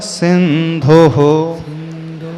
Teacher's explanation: विसर्ग में ह का उच्चारण आएगा